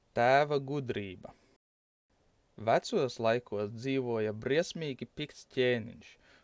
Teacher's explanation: due to Līvu influence, the stress is placed on the first syllable